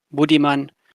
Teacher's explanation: the B and M are both articulated with your lips. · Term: labial consonants